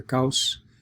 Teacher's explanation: It might sound like the A and the O come together as a single sound because it's pronounced so fast.